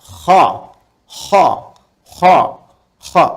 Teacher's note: itu bagian pangkal lidah di paling ujung itu menyentuh ke langit-langit. Sehingga ketika dia ke atas, suaranya lebih tebal.